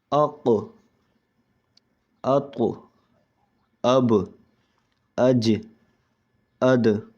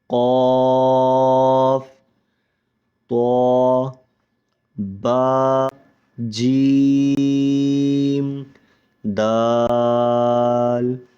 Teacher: جب ان حروف پر وقف کیا جائے تو اس وقت آواز کو جھٹکا دیا جاتا ہے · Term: حروف قلقلہ